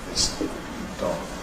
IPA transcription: ðɪs ˈd̥ɒg̥